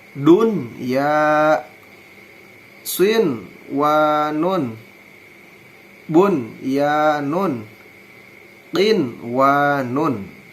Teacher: mengucapkan nun sukun atau tanwin dengan jelas dan tanpa memakai dengung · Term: idhar mutlak